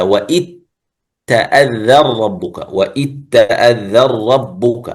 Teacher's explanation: فيها إدغامين لأنه يدغم الذال في التاء ويدغم النون في في الراء.